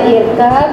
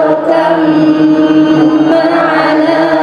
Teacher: irkam ma'ana bukan dibaca irkab, tapi banyak masuk ke huruf mim